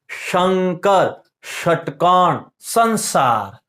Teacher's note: श वाले नियम में कितने हैं, तीनों श है, तीनों अलग अलग बोले जाते हैं, तालव्य, मूर्धन्य, दंत्य